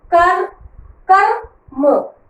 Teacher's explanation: क और म, र स्पीड में निकलता है, मतलब वो आधा है। तो देखो क, उसके बाद र, लेकिन आधा है ना ये, उसके बाद हम अ नहीं लगाएंगे, उसके बाद म और अ, कर कर म।